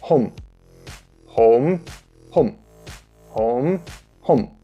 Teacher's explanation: mm is a bilabial nasal stop but it is pronounced a little shorter than we would in English